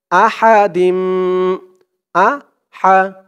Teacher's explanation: হার উচ্চারণটা গলার ভিতর থেকে চিকুন হয়ে আসবে